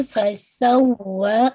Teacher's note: जी, फसवा, वाव पे ना शद है ना, फसवा है, तो आप देखिए फसवा, आवाज आवाज थोड़ी एलिवेट हो रही है वाव पे ना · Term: नबर